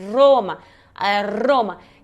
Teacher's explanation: é como se fosse fazer o r fraco né tipo aroma só que vai vibrar mais · vou puxando, vou tremendo aí a língua mais no céu da boca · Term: r forte, R forte